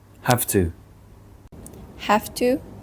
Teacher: the v in have is influenced by the sound that comes after it, which is the t in to. Because t is a voiceless sound, the voice v changes to a voiceless f to match it. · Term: regressive assimilation